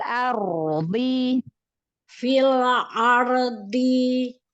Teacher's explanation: Ya, ditebalkan karena ro sukun sebelumnya fathah, tebal ya. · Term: ro tafhim